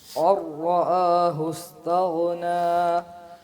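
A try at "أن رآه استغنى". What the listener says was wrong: آپ کو بولا ہے کہ آپ ذرا نا تھوڑا سا آواز کو اوپر سے نکالو، اونچی آواز نکالو. جب آپ پڑھتے ہیں نا شروع سے، اب دیکھو علی پڑھتا ہے تو وہ نیچے سے نہیں پڑھتا، تھوڑا اوپر جا کے.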